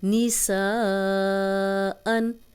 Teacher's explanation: الف مدہ، واو مدہ، یا مدہ کو 4 حرکات ہم نے لمبا کرنا ہوتا ہے کیونکہ حمزہ آگے آ گیا ہے